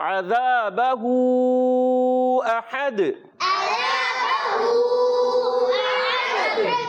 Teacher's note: احد میں پیارے بچوں حمزہ کو واضح کر کے ادا کریں گے. ہا کی ادائیگی کلیئر ہوگی حلق کے درمیان والے حصے سے، ہا سے نہیں بدلنا چاہیے.